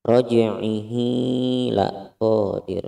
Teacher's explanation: Ada hadomir tidak bertemu dengan hamzah. Hukumnya mad silah qasirah dipanjangkan sepanjang 1 alif atau 2 harokat seperti kita memanjangkan mad tabi'i.